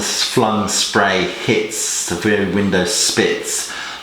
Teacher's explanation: Lots of repetition of the sibilant S to recreate the sound of the wind and the sea.